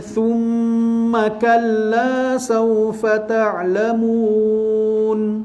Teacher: Thumma mim bersabdu tu wajibul gunnah, baca dalam keadaan dengung 2 harakat. Thumma kalla saufa pun waw lin, dia sama dengan ayat yang tadi kan, sama daripada sudut ayat, cuma tambah thumma je kat depan 2 kali.